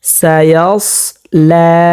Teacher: এই সটটা আমরা মোটা করে পড়ব, কারণ হচ্ছে সটটা মোটা হরফ, তো সতের উচ্চারণ হবে মোটা, যেমন সায়াস লা।